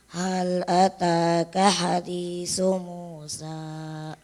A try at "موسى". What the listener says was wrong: kepanjangan. Musa, sa, 2 harakat saja.